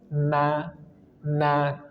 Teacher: Maka harus turunkan rahang I. Kemudian huruf nun ujung lidah dengan gusi gigi seri atas. · huruf nun, ujung lidah dengan gusi 2 gigi seri atas. Na. Dan dia termasuk huruf tarkik tipis.